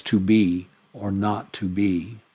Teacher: so there you have unaccented followed by accented, an unaccented followed by accented